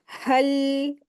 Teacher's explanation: लाम के ऊपर हमें कलकला नहीं करना है, लेकिन लाम को अच्छे से अदा भी करना है